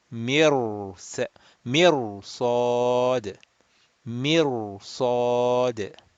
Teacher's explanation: this ra sakin, even though the letter before has a kasra, will be mufakham, rounded